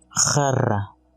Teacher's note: Esta consonante es fricativa uvular sin voz, lo que significa que suena muy fuerte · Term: Het